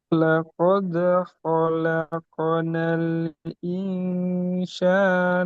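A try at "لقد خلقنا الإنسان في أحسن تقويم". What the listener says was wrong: Sin, bukan shin. Bukan shin, tapi sin. San, bukan shan. Bukan sa. Se. Sa Indonesia. Se.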